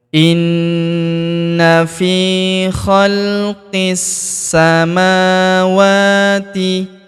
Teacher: huruf ma kita panjangkan 2 harokat karena terdapat alif kecil di atasnya